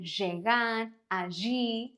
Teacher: in Argentina, it has this sh sound